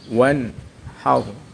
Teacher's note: Hukum bacaan idhar halqi, karena ada nun sukun bertemu ha. Cara membacanya nun sukun dibaca jelas.